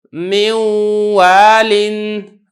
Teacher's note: اب یہ دیکھیں جو نون ہے اس کی جو صفت غنہ ہے وہ کچھ نہ کچھ ادا ہو رہی ہے، اس وجہ سے اگرچہ میں پڑھ تو واو رہا ہوں لیکن یہ جو ادغام ہے یہ ناقص ادا ہو رہا ہے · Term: ادغام ناقص